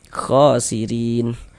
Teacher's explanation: Maka huruf ro dibaca tarkik, dibaca tipis. Khasirin rin dibaca panjang.